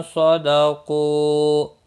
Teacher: क़ू वाव मद्दा है, 1 अलिफ के बराबर खींच कर पढ़ेंगे वक़फ़ की सूरत में भी।